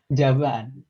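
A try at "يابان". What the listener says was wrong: Ya, ya pakai ya, terus ba. Yaban.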